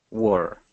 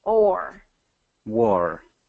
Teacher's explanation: That's much better because I was hearing, instead of war, I was hearing were. So you're doing kind of an ER sound instead of the OR. So we want to make sure war has OR.